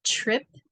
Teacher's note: TR is a little different it's like a ch